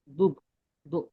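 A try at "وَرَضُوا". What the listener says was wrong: ওয়ারাজু, দুধ নয়, জু,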